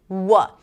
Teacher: W is the back of the tongue and the lips too. So the lips are also part of it. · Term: approximate